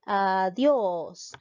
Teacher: en este caso tildó la e adios nos damos cuenta que la mayor fuerza de voz recae en la sílaba dios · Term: palabra aguda